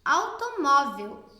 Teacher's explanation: Então, mó é a mais forte. Quando tem o acentinho, fica facinho da gente identificar. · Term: paroxítona